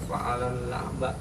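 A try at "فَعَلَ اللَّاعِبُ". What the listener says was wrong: Fa'alal la'ib. Di situ la'bah. Di situ dikasih harokat.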